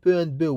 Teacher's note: we describe both per and bill with the same description because they are different only in one feature which is voicing or vibration in the vocal cords for p there is no vibration in different chords for b